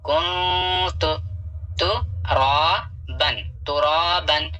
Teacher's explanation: یہاں تنوین کے بعد الف آتا ہے تو الف نہیں پڑھا جاتا ہے